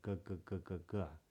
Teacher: you might feel that back there G it's right in the back of the throat